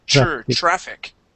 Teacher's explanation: we want to change that TR to a CHR.